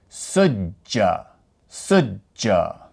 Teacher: Emphasizing that jeem. Emphasizing that J sound. Because that is what the shaddah represents.